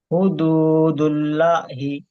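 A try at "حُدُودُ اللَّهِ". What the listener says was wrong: হ্যাঁ, হুদুদুল্লাহি, ল টান হবে তো। দিতেই হবে, টান না দিলে ভুল হবে, টান না দিলে ভুল হবে, যেখানে টান রয়েছে ওখানে।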